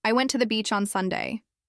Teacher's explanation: If you stress beach, you're emphasizing where you went. But if someone thought you went to the mountains and you correct them, then I went to the beach now has a correcting tone.